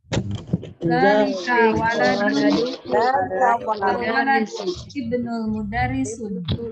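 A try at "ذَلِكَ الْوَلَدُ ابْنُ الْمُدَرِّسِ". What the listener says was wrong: Zalikal, ini menambahkan alif lam ya. Zalikal waladu ibnul mudarris.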